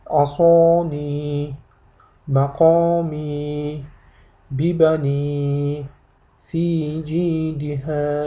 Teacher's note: Demak, mana shu belgini ko'rganingizda ham bu odatda harfning tagida keladi. 2 harakat miqdorida i ni cho'zib o'qiysiz.